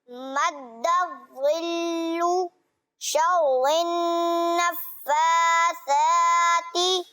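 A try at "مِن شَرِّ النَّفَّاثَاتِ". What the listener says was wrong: जी देखिए बेटा, शर्रिन की जो राह है ना, शर्री नहीं पढ़ेंगे। ये बापू एक आम सी गलती है कि जो सूरतुन नास में पढ़ते हैं ना, तो शर्रिन नास पढ़ते हैं। रा को बारीक पढ़ेंगे।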